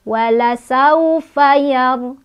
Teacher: Sawu itu adalah harf lin karena ada waw sukun sebelumnya ada huruf berbaris fathah. Cara bacanya lunak atau lembut.